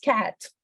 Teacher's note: Tenemos esta amiga cat, la boca completamente abierta, ¿sí? Cat, yo expando mi boca, que suene un poquito nasal, esa A tiene que sonar nasal